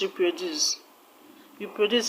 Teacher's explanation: I don't know if I've mentioned to you that you don't stress affixes, you don't stress suffixes and prefixes, you don't stress them. Now re is a prefix, so stress does not go there. It doesn't have the stress on the first syllable.